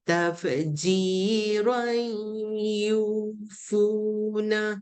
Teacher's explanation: kalau kita sambung dia jadi tafji roi masuk dalam ya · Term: idgham bi gunna